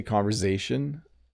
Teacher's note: If I say conversation, I make a little Z sound.